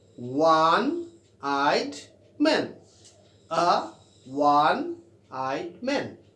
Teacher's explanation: दो the word starts with वावेल, दो the word starts with vowel sound, starts with vowel, but the sound is coming wa, wa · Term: wa sound